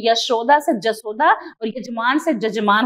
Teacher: बघेली के प्रभाव से यहां य का परिवर्तन जो है ज में हो जाता है